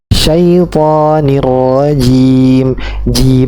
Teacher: ingat ini sifatnya jahar nafasnya Enggak terkeluar banyak